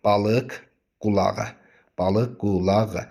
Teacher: Burda qoşa q olsa da, birinci q-nı kirsən. Birinci q-nı X kimi, ikinci q olduğu kimi qalacaq.